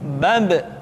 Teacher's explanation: Ketika mati, maka terdengar suara pantulan.